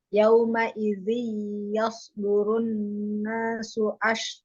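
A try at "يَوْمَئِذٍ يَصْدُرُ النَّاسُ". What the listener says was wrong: Yauma idzin. Kok nggak terdengar ya?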